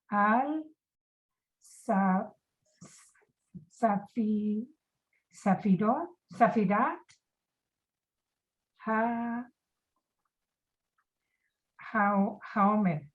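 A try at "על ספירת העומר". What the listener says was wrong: Right, Al Sfirat HaOmer.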